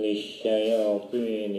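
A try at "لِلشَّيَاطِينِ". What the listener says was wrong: lisyayatinnya itu jangan naik Pak ya, tapi datar. Lisyayatin. Datar, bukan lisyayatin ya. Itu kemudian pengucapan hurufnya, makharijul hurufnya kurang tajam ya. Masih seperti setengah-setengah lah pengucapannya ya.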